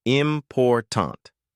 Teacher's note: in the word important, we stress the second syllable, important.